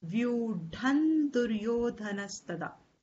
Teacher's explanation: then the anuswara will take the nasal of that group consonant